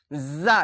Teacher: জিহ্বার আগা এবং সামনের উপর নিচের দুই দাঁতের আগার সাথে লাগিয়ে উচ্চারিত হবে এটা কি বলছে যা দেখেন উপর নিচে দুইটাই দাঁতের সঙ্গে যা